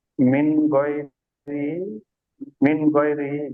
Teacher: নুন সাকিনের আওয়াজকে বিনা গুণনায় জাহির করে তাড়াতাড়ি করতে হয়।